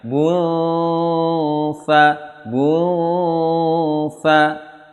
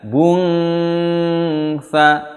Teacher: karena dengungnya itu tanggung, ya, dengungnya tanggung, tidak full dengung. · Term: dengung ikhfa